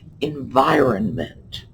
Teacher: that middle N is just barely touched on. But environment, that R is in there.